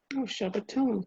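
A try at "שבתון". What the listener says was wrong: That's it.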